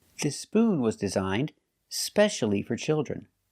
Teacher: with no e at the beginning you start with the S sound